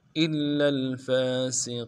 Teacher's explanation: سین کی سیٹی کو باریک ادا کریں گے اور قاف کو یا کے ساتھ ملانا ہے، قاف کو موٹا پڑھیں گے